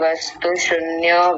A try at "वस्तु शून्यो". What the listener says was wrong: वस्तु शून्यो, आपने बोला शून्यो, शून्यो नहीं होता शून्यो, बड़े ऊ की मात्रा है, तो लंबा खींचना है थोड़ा सा। वस्तु शून्यो, बोलिए।